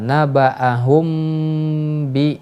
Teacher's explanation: Atau asyafatain atau asyafatani. Nah, maka dalam membaca mim bertemu huruf ba ini disamarkan. Ya, dengan sedikit membuka mulut kita. Tidak sampai kita menutupnya secara sempurna. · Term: ikhfa syafawi